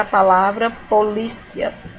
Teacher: eu vou partir de um som, olha aqui, um som fraco, que é uma semivogal, e vou em direção a um som forte, que é uma vogal. Lembrando que o A sempre será vogal. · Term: ditongo